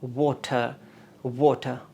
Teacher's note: اور یہ جو جے ہے یہ کی آواز دے گا لائک یس. اور یہ و ہے یہ بھی بائی لیبیل ساؤنڈ ہے، اس میں بھی آپ نے ہونٹوں کے ساتھ اس کو پروناؤنس کرنا ہے